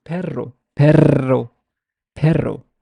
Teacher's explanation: can actually feel like my tongue is like it's being trilling it's rapid succession of flaps